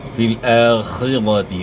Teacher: خا کو اپنے مخرج سے ادا کرنا ہے, یعنی گلے کے شروع سے